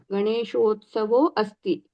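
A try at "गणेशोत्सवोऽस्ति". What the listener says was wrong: అక్కడ అస్థి అని పలకూడదు, మళ్ళీ గణేశోత్సవోస్తి అనేయాలి. రాయడం మాత్రం అవగ్రహతో. సో రెండు. గణేశోత్సవోస్తి ఫస్ట్ ది గుణ, తర్వాతది పూర్వరూపం వస్తుంది.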